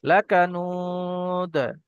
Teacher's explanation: দাল সাকিন হয়ে গেলে হরুফে কলকলা 5টি অক্ষরের মধ্যে উপরে যদি সাকিন হয় তাহলে একটু ঝাক্কার সঙ্গে কলকলা করে পড়তে হয়, তাই এখানে একটু কলকলা হবে।